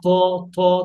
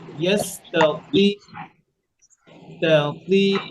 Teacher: বাতাস যেন না আসে, ত যেন মোটা হয়।